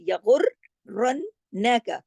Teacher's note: موٹے حروف کی فیملی سے ہے۔ را جو ہے وہ کنڈیشنل ہے، اس کو بھی زبر کے ساتھ ہے، اس کو موٹا پڑھیں گے۔ اچھا، سختی اس لیے کرنی ہے، یہاں سختی سے پڑھا جائے گا کیونکہ یہاں پر تشدید ہے، اور ایک تشدید نہیں ہے، دو تشدید ہے، نون پر بھی تشدید ہے، را پر بھی، یغرنک۔